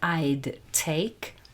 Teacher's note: i would is being contracted to i'd and then take starts with a very similar sound and are very similar and the t is stronger and so